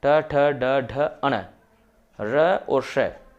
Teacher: इनका उच्चारण स्थान मूर्धा होता है और ये सारे वर्ण मूर्धन्य वर्ण कहलाते हैं